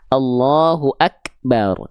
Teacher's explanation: Kalau huruf kaf itu cukup dipercikan saja ya